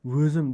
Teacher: voʻzim deganda oʻzimdan oldin o'sha v-ning talaffuzda orttirilishi deftong sifatida e'ttirof etiladi